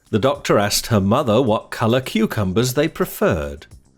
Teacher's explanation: the word preferred has the stress pattern unstressed stressed but no schwar sound on the first syllable this is because the I sound is often found in unstressed